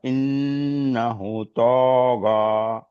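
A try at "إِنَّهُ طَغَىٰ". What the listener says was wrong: ইন্না হুর পরে ছোট্ট একটা ওয়াও আছে, তাহলে কি হয়? টান হবে, মানে এটা হচ্ছে আপনার যেহেতু মাদ, এটা একটা মাদ আসলি। ইন্নাহু তগ, এখানে আলিফে যেমন টান, হুতেও টান হবে।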